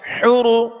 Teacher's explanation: را کو پر پڑھیں گے، را پر پیش ہے